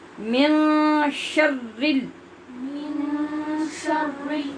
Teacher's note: زبان میں سختی پیدا کریں را کے مشدد ہونے کی وجہ سے